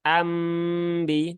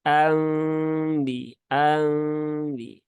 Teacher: yang perlu diperhatikan Jangan dibaca dengan iuni karena dia ada gunahnya maka ditahan dulu ya gunahnya ditahan tiga harakat dan dirapatkan secara ringan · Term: ikqlab